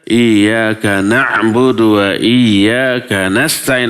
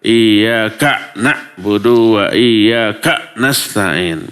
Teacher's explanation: Antara ka dengan na'budu dan ka nasta'in tidak perlu diputus.